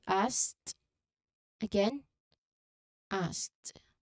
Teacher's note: So, this is a very common past tense ending. It's the s sound followed by an aspirated k sound and then an invoice t asked t at the end. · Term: SKT cluster